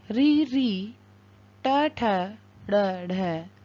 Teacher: इनका उच्चारण स्थान मूर्धा है, इसलिए इनकी संज्ञा मूर्धन्य कहलाती है।